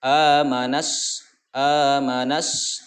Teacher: Jadi di sini bunyinya adalah dari nun ke sin. Alif lam di tengahnya itu seolah-olah tidak terbaca, padahal ada. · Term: alif lam syamsiah